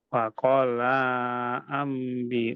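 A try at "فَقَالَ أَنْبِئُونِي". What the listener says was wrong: Lanya pendek Pak. Faqala Nah, masih kurang panjang Pak lanya. Tarik lagi napasnya Pak ya ketika tilawah. Tarik lagi. Saya yakin Bapak masih bisa lebih panjang lagi napasnya.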